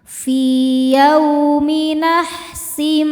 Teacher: Selanjutnya ada idgham bighunah karena ada tanwin kasrah menghadapi mim. Cara bacanya tanwin dimasukkan ke mim disertai dengungan. · Yau ada harfulin karena ada wau sukun sebelumnya fathah. Cara bacanya dilembutkan atau dilunakkan.